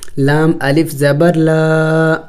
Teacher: الف مدہ کو ایک الف کے مقدار کھینچنا ہوتا ہے، لمبا کرنا ہوتا ہے